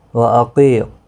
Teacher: قاف مستعلیہ ہے، پور پڑھا جائے گا۔ قی یا مدہ بھی ہے، ایک الف کی مقدار کے برابر کھینچ کر پڑھیں گے۔